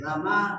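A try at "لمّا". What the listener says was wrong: Lamma itu ada tasdid.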